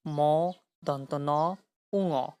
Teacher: যেসব ধ্বনি উচ্চারণের সময় বাতাস মুখের ভেতর বাধা পেয়ে নাক ও মুখ উভয় দিক দিয়েই বের হয়, তাদেরকে নাসিক্য ব্যঞ্জন ধ্বনি বলে।